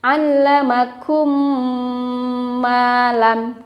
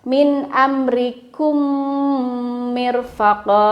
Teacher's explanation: ketika mim bertemu dengan mim begitu, maka bibirnya rapat sempurna dan digunakan, ditahan 2 harokat. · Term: idgham shaghir